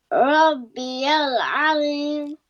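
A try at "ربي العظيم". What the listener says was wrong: Za will be heavy. Rabbiyal Azim. Za is heavy. Zim, zim. Make your lips rounder. The A sound. Rabbi al Azim. Rabbi al Azim. Za is heavy.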